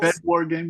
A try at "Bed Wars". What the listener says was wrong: It's a S. It's Bed Wars, There's an S.